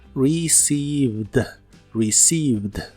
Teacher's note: no se pronuncia ninguna e en esta palabra solo lleva dos sonidos vocales y son de la i larga